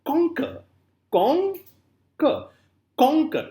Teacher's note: the first syllable is stressed and second is unstressed · emphasis is on the word Kong not on C so the first syllable if the first syllable is stressed and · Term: troche